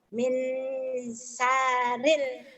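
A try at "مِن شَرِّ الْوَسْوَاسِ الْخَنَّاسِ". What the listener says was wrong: Sar R-nya ditahan. Ditahannya, Bu.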